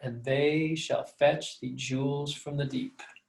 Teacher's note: notice that your voice will go down a little bit at the end you might flip the last two accents in that last foot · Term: iambic pentameter